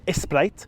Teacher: since SP can't come at the beginning of a word just add a vowel in front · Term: phonotactic repair